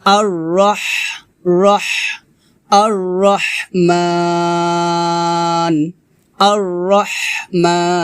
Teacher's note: আর রহ রহ আর রহমান এটা হবে না, হবে আর রহ রহ র হা জবর রহ রহ হাটা গলার মাঝখান থেকে চাপ দিয়ে বের করতে হবে